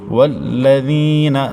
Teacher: نون متحرک ہے تو اس کو بغیر کھینچے اور بغیر جھٹکا دیے پڑھنا ہے · والذین، ذال نرم حروف میں سے ہے، نرمی سے پڑھیں گے۔ ذال کے بعد یا مدہ ہے تو اس کو ایک الف تک کھینچیں گے